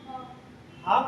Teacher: हा बोलेंगे तो आपके मुख से ज्यादा वायु निकलेगी, तो महाप्राण।